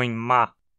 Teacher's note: os lábios superior e inferior tão tocando o que indica que essa consoante bilabial como os lábios em perdem completamente a saída de ar pela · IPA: [m]